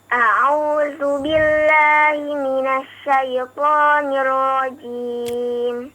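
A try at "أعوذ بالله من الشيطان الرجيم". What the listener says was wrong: Iya, pelan-pelan ya. Nggak usah buru-buru. Bukan suaranya yang dipelankan ya, tapi perlahan maksudnya. Suaranya tetap kencang.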